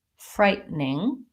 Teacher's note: Americans will very frequently say this more like frightening, where we leave the middle syllable out. So we tend to do two syllables.